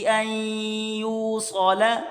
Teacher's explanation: حمزہ کو یا کے ساتھ ملا کر پڑھیں گے، یہ بیچ میں نون نہیں پڑھیں گے